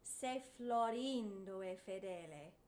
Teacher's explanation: The very first line, Se Florindo e Fedele, the accent is on rin, of Florindo.